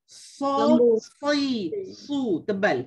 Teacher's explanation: Sod ni adik-beradik dengan dengan to tadi, dia ada sifat isti'la, dia ada sifat itba'. Walhasil kita kena sebut dia dengan tebal. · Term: huruf sod